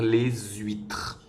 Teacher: dans le mot huîtres le h est muet on pourra donc faire la liaison pour dire les huîtres